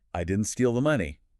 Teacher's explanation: If you stress I, you're saying someone else did.